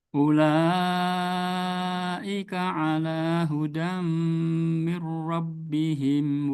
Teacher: Kurang hudam. panjang ulanya. Ula 4 harakat minimal.